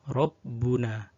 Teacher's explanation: Pertama-tama mari kita membahas tentang ra yang berharokat. Ra yang berharokat fathah maka dia dibaca tafkhim atau tebal.